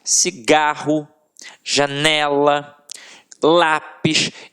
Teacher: Então, realmente, a sílaba que a gente proferiu com mais força sempre esteve na penúltima sílaba. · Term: paroxítonas